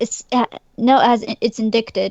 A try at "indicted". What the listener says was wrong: The C is silent. It is indicted.